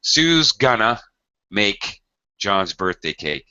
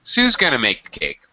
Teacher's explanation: I would make Sue is into a contraction. I would make going to into gonna.